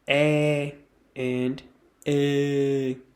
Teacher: to pronounce the /e/ sound your throat should be soft and relaxed but to pronounce the /ê/sound you have to make your throat quite hard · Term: throaty sound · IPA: /e/ and the /ê/